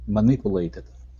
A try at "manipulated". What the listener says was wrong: Okay, now the U is going to be a pew. Manipulated.